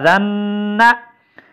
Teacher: یہ ذال ہے باریک پڑی جائے گی